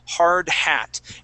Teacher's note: So when we say that D sound, hard hat, okay, I want you to think of that Spanish R feeling. So like when you say ere, okay?